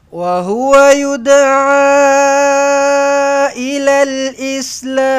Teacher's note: Boleh panjangkan lam itu belakang dengan panjang dua atau empat atau enam harakat.